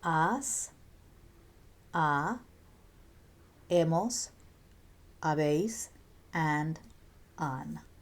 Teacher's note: Remember that the H is silent in Spanish